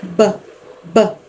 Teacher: bilabial sound means वो वाले आवाज़ें जो आप अपने 2 होंठों को आपस में जोड़ के निकालते हैं